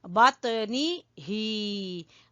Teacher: नून को नहीं खींचना क्योंकि यहाँ खाली जेर है। बात नी ही, नून को छोटा पढ़ेंगे और ही को खींचेंगे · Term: खड़ी जेर